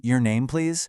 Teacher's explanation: That rising intonation turns a tiny fragment into a perfectly polite question.